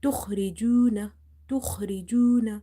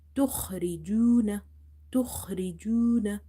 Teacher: Kha you have to pronounce from the top of the throat, as well as you have to read it heavy.